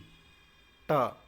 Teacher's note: ट जो है वह मूर्धन्य से बोला जाता है, ना कि दंत से